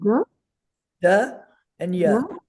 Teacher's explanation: It's a dental duh and a semi vowel Yah squished together. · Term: compound consonant